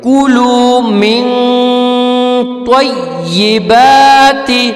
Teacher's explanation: اب کلو کے بعد من ہے، میم نون زیر من، تو نون پہ ساکن آ گئی. جب نون پہ ساکن آ گئی ہے، ٹھیک ہے، تو اس کو یہاں پر ہم غنہ پڑھ کے پڑھیں گے